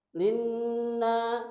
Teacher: Nun ketika nun bertasydid berarti harus ditahan 2 atau 3 harakat. Na disambung dengan mutabi.